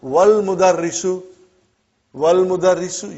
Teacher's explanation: you did not pronounce Hamza. Okay? Because it's Hamzatul Wasal.